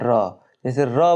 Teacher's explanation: इसमें मुख्य द्वार जीभ की नोक से शीघ्र ही बंद होता है और 2-3 बार खुलता है, जैसे र बोलेंगे तो जीभ जाके वहीं वाइब्रेट होगा हल्का सा, 2-3 बार वहाँ पे खुलेगा, जैसे लिखा हुआ है इसमें मुख्य द्वार जीभ की नोक से शीघ्र ही बंद हो जाता है। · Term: लुंठित